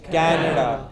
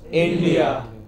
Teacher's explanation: names of countries where Englishmen emphasize, stress the initial part